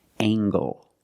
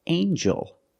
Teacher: We have angle, spelled L-E, making the nasal sound and the hard g.